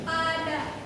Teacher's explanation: vokal A dalam pada merupakan vokal rendah dan sedang